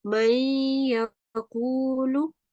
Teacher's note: These are idgham letters, ya, mim, waw, and noon. And they merge the words with a 2-second nasal sound